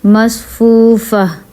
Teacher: جب وقف کریں گے تو تا کو ہا میں چینج کر دیں گے